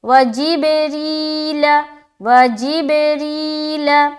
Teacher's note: سے ہے، را یا زیر ری، یہاں یا مدہ کریں گے، را باریک رکھیں گے کیونکہ اس کے نیچے زیر آ گیا